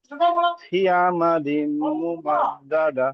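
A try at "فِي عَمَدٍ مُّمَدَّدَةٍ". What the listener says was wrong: এখানে ফা ইয়াজের ফি ইয়ায় মাদ্দা আছে, ফাটাকে একালিক পরিমাণ টান দেন। ফি আমাদিম মুমাদ্দাদা।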